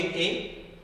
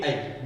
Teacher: जब आप ए का उच्चारण कर रहे हैं तो मुख विवर कम खुल रहा है और आई में ज्यादा खुल रहा है